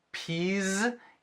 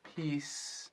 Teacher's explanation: O plural de ervilha tem som de Z, peas. E aí, paz tem som de S, peace.